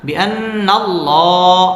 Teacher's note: আল্লাহ শব্দের এই লামটা পুর হবে এবং ল এক আলিফ টেনে পড়তে হবে